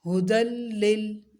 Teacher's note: اب یہ یا خالی ہے تو اس لیے یا کو چھوڑ دیں گے، یا کو نہیں پڑھیں گے، دال کو لام کے ساتھ ملا کے پڑھیں گے. ہدل لل، لام کو ہلانا نہیں ہے، لمبا بھی نہیں کرنا.